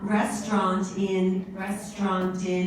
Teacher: The only thing I have to say is on restaurants, because it's followed by a word in, the preposition in that begins with a vowel, we need to hear the T just a little bit more strongly. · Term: linking